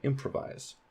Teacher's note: So that primary stress is on im.